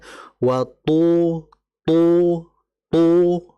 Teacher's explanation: thnya itu masih ee tipis ya harus ditebalkan · pertama adalah ee entah ini apakah karena efek rekaman atau bagaimana tadi di watu waktu itu seperti ada sedikit ee udara yang keluar bocor itu sepertinya harus ee tertahan th itu tidak boleh ada hames, enggak boleh ada desisan karena dia bersifat jahar